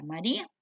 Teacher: el acento recae sobre la I, por recaer sobre una débil se tiene que tildar y se volvió un hiato. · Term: ley del hiato